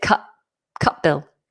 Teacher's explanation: because we've got a T and a B, Cutbill, the T would automatically become more glottal. We drop it, Cutbill.